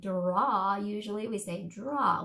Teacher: So when we put those two sounds together, we often turn the D and R into that jr, to the j sound with the R.